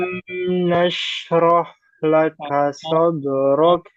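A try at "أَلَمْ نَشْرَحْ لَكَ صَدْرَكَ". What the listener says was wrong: Ya, jangan lebih panjang ya. Mimnya jangan lebih panjang. Alam nashrah laka sadrak.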